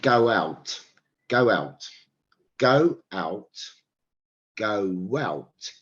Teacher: Can you hear that w sound, right? That's called an intrusive consonant